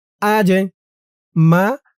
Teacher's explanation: এই জিমটা কলকলার হরফ ধাক্কা দিয়ে পড়তে হবে